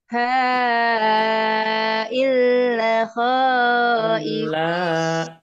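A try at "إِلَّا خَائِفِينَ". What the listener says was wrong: La-nya panjang. Awas ada alif.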